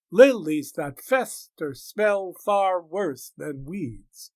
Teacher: Line 14 is punctuated with a trochee, lilies, and a spondee, far worse.